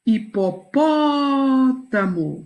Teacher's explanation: o pó é a sílaba tônica da palavra